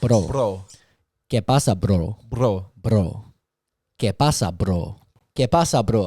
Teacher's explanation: with the r you're like tapping your tongue against the roof of your mouth